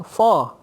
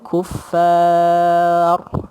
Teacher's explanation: Bukan for. Ra tu memang tebal, tapi dekat fa tu tidak tebal. Bila fa tidak tebal, kuffar.